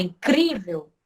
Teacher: Então, por isso que o acento está aqui no CRI, porque ela é uma palavra paroxítona. Quando eu falo incrível, o CRI ele é mais forte, então por isso que ele leva acentuação. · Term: sílaba tônica